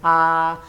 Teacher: la boca está en su máxima abertura la lengua no avanza ni retrocede está en su mismo punto